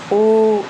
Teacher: वृत्ताकार वृताकार में तो गोल हो जाते हैं होट ठीक है उच्चारण के समय होट गोल हो जाते हैं